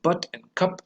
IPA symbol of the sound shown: ʌ